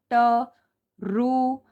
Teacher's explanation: जो हमारी टंग है वो हमारे तालू के आगे वाले भाग से टच होती है। जो रु है ये हमारा मुर्धा से प्रोनाउंस होता है। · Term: मृदा